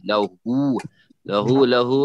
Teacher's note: لہو اس کے اوپر بھی مد ہے، تو اس کے اوپر بھی ہونٹ گول ہو کے چھوڑ دیں.